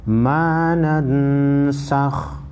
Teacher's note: نون ساکن ہے، اس کے بعد حروف اخفاء میں سے سین ہے، نون ساکن کو غنہ کریں گے